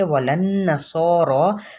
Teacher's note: نون پہ غنہ کرتے ہوئے سو اور رو دونوں کو پر پڑیں گے